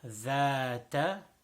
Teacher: it is tip of the tongue and tip of the two upper front teeth